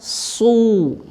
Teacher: terutama kalau huruf Shad itu harakatnya fathah dengan damah su ini kelihatan tebal sekali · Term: Huruf tebal